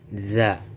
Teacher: makhrajnya punggung ujung lidah dan ujung dua gigi seri yang atas. Sifatnya nafas ditahan, lunak dan suara tidak tertahan rokhwa.